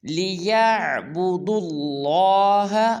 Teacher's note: دال کو لام مشدد کے ساتھ ملائیں گے اور لام کو پر ادا کریں گے